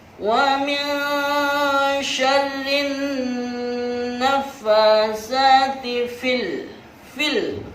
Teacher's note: lamnya jelas, disebut dengan alif lam qamariyah